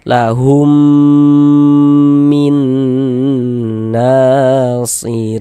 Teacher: Kita idghamkan, kita dengungkan. Nah, lahum di bagian humnya itu suaranya itu kita tahan, kita panjangkan sejenak ya, kita gunahkan sepanjang dua harakat. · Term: idgham mimi